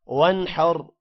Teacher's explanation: آگے حروف حلقی حا آ رہا ہے، اس وجہ سے نون پر غنہ نہیں ہوگا اور را کو موٹا پڑھیں گے